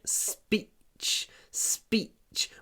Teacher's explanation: Супер короткий и. Между двумя глухими согласными.